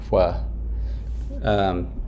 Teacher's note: Or like say it just doesn't matter because like if you're thinking about pronouncing a k followed by a w, kind of naturally labializes